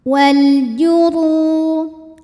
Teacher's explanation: Huruf ra dibunyikan secara tafkhim sebab ra berbaris dhammah, maka dibaca tebal.